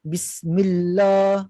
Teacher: Kalau saya baca Bismillah, itu lam yang mufakhamah, lam yang tebal.